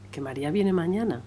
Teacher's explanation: Se caracteriza, como vemos, por un marcado ascenso y descenso de la inflexión final. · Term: entonación circunfleja